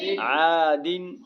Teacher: غنہ اس لیے نہیں ہوگا کہ آگے حروف حلقی کے 6 حرفوں میں سے عین آ رہا ہے